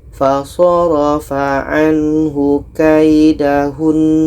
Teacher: Seterusnya dalam ayat 34 di sini ketika kita berhenti ada nun tasydid. Maka nun tasydid ini tetap kita dengungkan kalau berhenti.